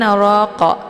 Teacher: rnya dibaca tebal dengan posisi ujung lidah terangkat ke langit